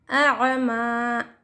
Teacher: ما کو ہم ایک الف کی مقدار کھینچ کر پڑھیں گے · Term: الف مد